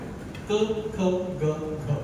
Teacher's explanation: जिभेचा मागचा भाग जीभ आणि पडजी जर आपण टच करून वेगळे गेलं तर क म्हणतो